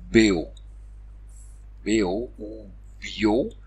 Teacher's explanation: Et la diphtongue aou se réduit enfin